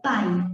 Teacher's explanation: igual no pai, que primeiro veio a vogal A e depois veio a semivogal I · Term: ditongo decrescente